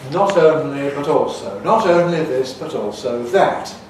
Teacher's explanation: in conservative varieties of English, like in my careful speech, those T sounds are voiceless alveolar plosives